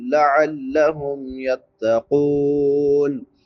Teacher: غیر ذی عوج لعلہم یتقون، قوف کے بعد واو مدہ ہے، واو ساکن ما قبل ضمہ یعنی پیش ہے تو اس کو ایک الف کے برابر لمبا کریں گے۔